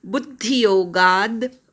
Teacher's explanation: गा नंतर अर्धा द म्हणायचा, गाचा उच्चार पूर्ण करायचा